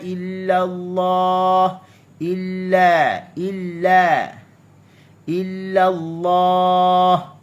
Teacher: Huruf lam, kalimah Allah dibaca dengan tebal dan pastinya dia ada syibih itbaq. Illallah, ada sedikit lekukan pada lidah.